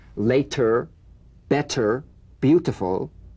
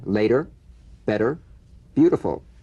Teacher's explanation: the medial T becomes a soft D all right not a complete D but it goes toward a d